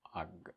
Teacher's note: say it in a way that I don't release the final consonant